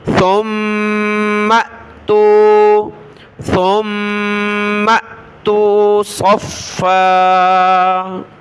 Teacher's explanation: سا کو میم کے ساتھ ملائیں گے اور میم کو حمزہ ساکنہ کے ساتھ ، اور حمزہ ساکنہ کو جھٹکے کے ساتھ پڑھنا ہے، ثُمَّ